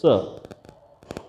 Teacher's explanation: जब आप स बोलते हैं स, तो स में आपके दंत मूल से जीभ जो है हल्की सी टच करती है, स। और र बोलते हैं तो र में थोड़ी सी जीभ ऊपर जाएगी, र।